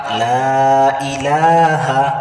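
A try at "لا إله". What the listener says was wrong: লা আবারও টান দেন,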